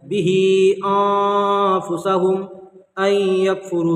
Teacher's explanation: मीम साकिन के बाद बा और मीम नहीं है यहाँ पर, तो इसको इजहार शफ़वी करके यहाँ पर ज़ाहिर करके पढ़ना है। अन यकफुरू मल गुन्ना यानी नाक़िस, यहाँ पर इदगाम नाक़िस हो जाएगा, ठीक है।